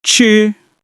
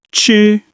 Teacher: It's a first tone, so your voice stays even and high. Listen. Ch.